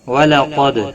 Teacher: دال ساکن پر قلقلہ ہوگا